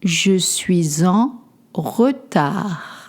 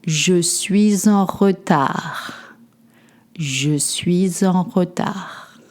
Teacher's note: You don't pronounce the D at the end.